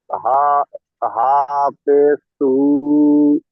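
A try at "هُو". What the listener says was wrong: হা ওয়াও আছে দেখেন, হাটা গিয়ে ওয়াও ধরবে দেখেন, ওয়াও সাকিন ডান দিকে কোটের উপরে পেশ, ওয়াও মাদ্দা, ওয়াও মাদ্দা হলে একারি পরিমাণ টান দিয়ে পড়তে হয়। হা ওয়াও পেশ হু, টান হবে।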